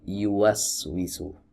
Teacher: Nah, ini kalau sampai bertemu, jadi tidak bertemu, dia hanya mendekat saja, yuwaswisu. Ya, huruf ya keluar dari tengah lidah, bertemu atau mendekat dengan langit-langit, kemudian di atasnya ada dhammah yu.